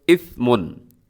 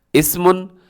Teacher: सा की अदायगी में सीटी नहीं होती